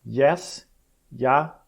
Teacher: é um som do tipo I, seguido da verdadeira vogal que vem logo após. Então esse aqui é um tipo de tom que o elemento fraco vem primeiro e depois vai chegar na vogal. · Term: ditongos crescentes